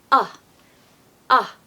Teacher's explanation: very short and made sort of in the midsection of your mouth not right at the back like with the short a it's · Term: short u